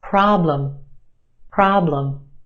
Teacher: our first syllable is emphasized the ah problem is stretched and emphasized in the first syllable our second syllable is where you have your schwa problem problem